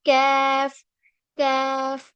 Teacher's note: जबान का जो पिछला हिस्सा है यानी बैक पोर्शन जो है, वो हमारे हार्ड पैलेट पे टच होगा।